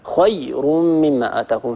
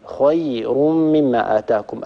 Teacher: مثلا أنت لما قرأت الآن قوله تعالى فلما جاء سليمان قال أتمدونني بمال فما آتاني الله خير مما آتاكم، أنت قرأت هكذا خير مما آتاكم فنبرت الياء، والياء هنا لا يعني لا داعي للنبر فيها، هي ياء ساكنة، هي من حرف رخو يعني لا داعي لضغطه